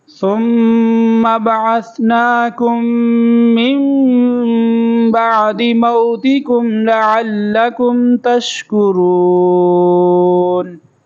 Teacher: یہ ثم پہ غنہ کریں گے، میم مشدد ہے تو تشدید والا حرف جو آ جاتا ہے وہاں پر غنہ ہوتا ہے، تو یہاں پر ثم ایسے پڑھیں گے۔